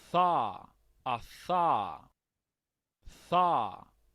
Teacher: es el sonido de la Z, es interdental, es Z, Z. Es este.